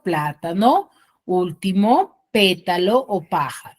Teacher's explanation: hacer correctamente es identificar correctamente su sílaba tónica no por ejemplo las esdrújulas van a tener la mayor fuerza de voz en la antepenúltima sílaba